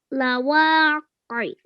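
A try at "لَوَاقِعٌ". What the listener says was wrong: Lawaqi'. Difficult sounds to make, but mashallah, you did a really good attempt at that. But we must remember that this turns into a sukoon. That's why we're joining the qaf to the ayn.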